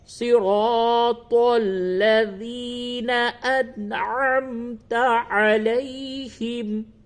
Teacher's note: صراط را کو اور الف کو کھینچ کر کے پڑھیے، صراط تا کو پڑ کر کے پڑھیں